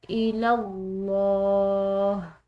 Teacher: لفظ اللہ کی لام پورا ادا کی گئی ہے کیونکہ پیچھے والا حرف یعنی کہ لام زبر کے ساتھ آ رہا ہے